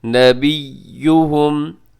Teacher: یہاں یا کے اوپر تشدید ہے تو تشدید والے حرف کو مضبوطی سے ادا کیا جاتا ہے